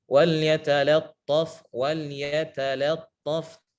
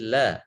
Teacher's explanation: Wal yatalattaf di sini huruf lamnya harus dibaca tipis.